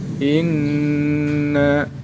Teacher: Hukum bacaannya hunnah, karena ada nun tasydid. Cara membacanya, nun tasydid dibaca mendengung.